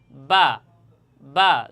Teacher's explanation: বা হরফটির মাখরাজ তথা মাকাম হচ্ছে দুই ঠোট। দুই ঠোট হতে এই বা হরফটি উচ্চারণ হয় তথা এই ঠোটের ভিজা অংশ বা আপনারা যদি আমার দিকে লক্ষ্য করেন তাহলে দেখবেন আমি কিভাবে উচ্চারণ করি লক্ষ্য করুন।